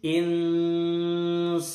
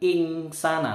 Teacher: nun sukun ketemu sin, ini bacaan samar atau ikhfa. Dibaca nunnya mau menuju ke sin. Insana, ya didengungkan nunnya.